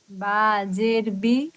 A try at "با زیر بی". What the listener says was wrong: زیر کو ہاں، زیر کو اور صاف اور واضح کیجئے، جو زیر میں جو زا کی آواز ہے، با زیر بی،